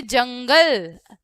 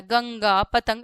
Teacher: इसका उच्चारण स्थान होता है नाक। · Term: अनुस्वार